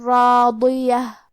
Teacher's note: حرف الضاد کی ادائیگی زبان کے کروٹ اور اوپر کے داڑھوں کے جڑ سے ہے ، ضاد بھی حروف التفخیم میں سے ہے، تو ہمیں یہ